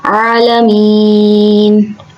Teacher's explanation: عین کو اس کے مخرج سے ادا کریں گے، عین کو ذرا زور لگا کے حلق سے نکالتے ہیں. عالمین.